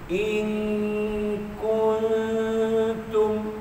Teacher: Masa sebut kun itu, ujung lidah kita dekat dengan pangkal gigi tapi tak sentuh. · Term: ikhfa